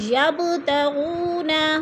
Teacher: یب با ساکن اور حروف قلقلہ میں سے ہے تو با ادھر قلقلہ ہو رہا ہے، با کو ہلا کر پڑھیں گے۔ تغونا، وہ ساکن سے پہلے غین کے اوپر پیش ہے تو ادھر وہ مدہ کو ہم نے 1 الف 2 حرکات کے برابر لمبا کر کے پڑھنا ہے۔